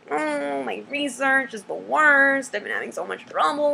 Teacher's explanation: I've been having so much trouble with it you can see my voice gets really high and whiny and it and it Quivers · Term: creaky voice